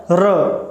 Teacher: तो रा एक ऐसी ध्वनि है, एक ऐसा व्यंजन है जिसके उच्चारण करते समय हमारी जिह्वा है वो मुड़ जाती है और कंपन होता है, हमारे जिह्वा में कंपन होता है र, ठीक है। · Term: प्रकंपित